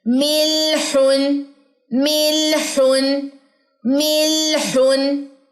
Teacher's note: زبان کے کنارے دواحق تک جانے چاہیے، دواحق کے مسوڑوں تک جانے چاہیے